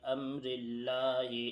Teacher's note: لفظ اللہ سے پہلے را کے نیچے زیر ہے، اس لیے لفظ اللہ کے لام کو باریک پڑھا جا رہا ہے